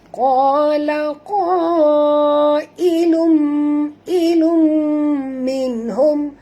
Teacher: Lum di sini tanwin bertemu dengan mim. Kita kena masukkan bunyi tanwin ini terus ke dalam mim disertai dengan dengung. Ya, ini dinamakan idgham ma'al gunnah ya.